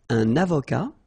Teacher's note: liaison here and then final T not pronounced